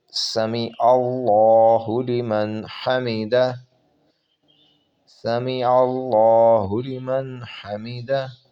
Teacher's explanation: لفظ اللہ کے لام کو جو لام جلالہ ہے اس کو موٹا پڑھا جائے گا۔